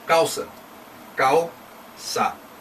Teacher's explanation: Sílaba mais forte, então a penúltima sílaba é a mais forte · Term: sílaba tônica